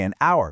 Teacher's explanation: we say an hour because the H is completely silent, meaning the word starts with an vowel sound.